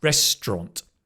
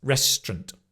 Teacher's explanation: So it's not even an 'aunt', it's just an 'ɒnt', restaurant. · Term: squeezed pronunciation